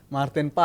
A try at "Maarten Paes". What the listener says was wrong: Bukan pas. A-nya 2 pas.